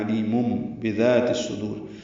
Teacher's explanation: یہاں پہ وَهُوَ عَلِيمٌ بِذَاتِ الصُّدُورِ ہے۔ وَهُوَ جلدی پڑھنا ہے، علیم میں عین وسط حلق سے ادا کرنا ہے · بعد با آنے کی وجہ سے مم اقلاب ہو رہا ہے، نون کی آواز کو میم سے بدل کر پڑھ رہے ہیں